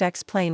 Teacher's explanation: The correct answer is option A, the second syllable. The word is pronounced Xplain with the emphasis on the final syllable.